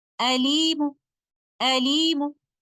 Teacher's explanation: If I choose to stop here with waqf bir Rawm, I will take the tanween off of letter meme and I will recite letter meme with only one dhamma by giving 1/3 of the full vowel length of dhamma, and this is how we will stop here with Rawm.